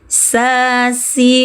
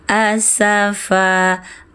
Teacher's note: ujung lidah menyentuh dinding belakang gigi seri bawah